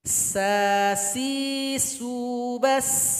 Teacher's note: Ketika dia sukun, banyak bunyi hamasnya, banyak suara angin yang keluar.